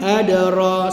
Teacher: Dal qalqalah dibaca secara qalqalah sughra tengah kalimah.